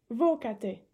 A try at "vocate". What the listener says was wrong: Attention, on ne dit pas vocate, hein, le A est important, il est dans le radical donc.